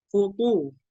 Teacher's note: to-nya bibirnya monyong karena berharokat dhammah. Tapi selama tidak berharokat dhammah, to-nya itu tidak boleh monyong karena tidak ada karena huruf to tidak dikeluarkan dari bibir tapi dikeluarkan dari lidah.